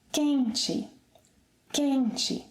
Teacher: The stress is again on the 2nd syllable to the last, meaning that the final 'e' is unstressed